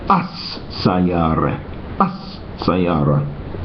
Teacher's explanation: sometimes the lam, that is the letter L of the word al, is pronounced the same as the first letter of the word that follows. So if we have the word, for example, in Arabic for car, sayara, and we want to say the car, instead of saying, we would write al-sayara.